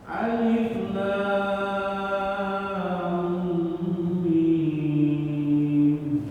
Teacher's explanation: Jadi panjangnya harus sama antara lam sama mim.